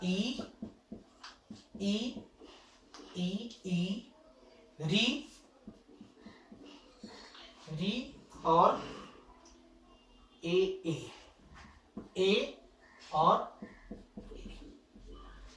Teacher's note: जीभ के आगे वाले भाग में कंपन उत्पन्न होती है, उसको हम अग्रस्वर बोलते हैं